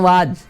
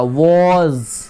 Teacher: अगर आप लिप्स को नहीं सटाएंगे वेरी निकलेगा। अब देखिए मुंह को चौड़ा कर देंगे तो वाज ऐसा ही बोलते हैं ना, वाज। अब देखिए अगर हम इसको मुंह को गोल करके ऊपर खींचेंगे तो वॉज हो जाएगा, वॉज। आपको फर्क नजर आ रहा है, वाज में देखिए मेरे मुंह का मूवमेंट।